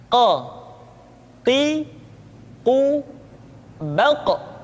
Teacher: Berikutnya pengucapan huruf Qa. Huruf Qaf diucapkan dengan cara menyentuhkan pangkal lidah kita dengan langit-langit bagian belakang.